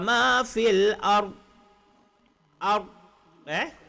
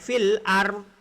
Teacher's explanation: Ketika kita berhenti dekat ard, lidah kena ada dekat tepi geraham.